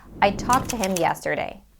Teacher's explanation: and the next word that starts with the T sound and they blend together and we pronounce only one T